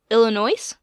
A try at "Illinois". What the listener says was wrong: The S is silent.